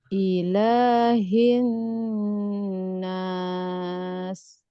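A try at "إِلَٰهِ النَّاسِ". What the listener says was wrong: Ya hati-hati jangan sampai karena kita sudah siap-siap dengan bunyi setelahnya Bu. Jadi la normalnya hilang. Nah, kan la di sini kan bunyinya tipis, bunyinya jelas ya Bu ya.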